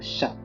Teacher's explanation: La constrictive post-alvéolaire sourde, dans le mot chat par exemple